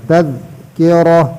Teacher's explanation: تذکرہ را کو موٹا کرنا. را پر زبر ہے